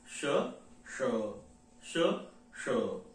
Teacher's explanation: त्याचा उच्चार हा तालव्य आहे तो आपल्या जिभेच्या पुढच्या टोकाजवळ होतो